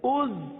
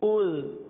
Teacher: زا میں تو سیٹی کی آواز آئے گی، زال میں نرمی ہوگی